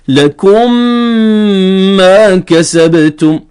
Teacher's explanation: يعني مثلا لكم انتهت بميم ساكنة، ما كسبتم ما ابتدأت بميم متحركة، فيجب هنا إدغام الميم الساكنة في الميم المتحركة. فنقرأ هكذا: لكم ما كسبتم، أعطينا الغنة أيضا.